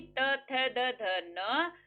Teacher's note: त वर्ग। अब त को बोल के देखो, जीभ सीधी दांत पे जाएगी।